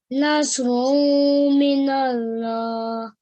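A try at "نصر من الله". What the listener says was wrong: I think you're doing a nasal sound over here. We do not do nasal sound on run. Whilst we join this to the mushaddad, we do nasal sounds. This is a tanveen.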